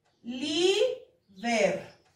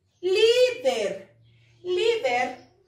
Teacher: ¿Dónde está la sílaba tónica? En li. Líder, líder, li es la penúltima sílaba o la penúltima posición, por lo tanto sí es una palabra grave y no está terminando ni en N ni en S, entonces sí lleva tilde, se la vamos a colocar, líder.